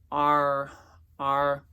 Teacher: You kind of feel your tongue kind of arch and go back a little